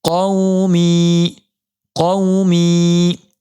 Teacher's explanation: واویلین کو نرم آواز کے ساتھ جلدی پڑھیں گے